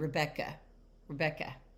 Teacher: But traditionally, if you have a lot of names that end in an a, that's going to be a schwah sound. Even though it's ending in a and that's an open syllable, it can make the schwa sound.